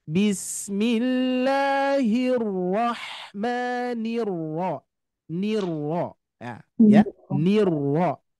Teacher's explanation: Nirro tetap nanti huruf ro ini mempunyai sifat takrir ya. Takrirnya tetap harus terdengar Bapak Ibu ya.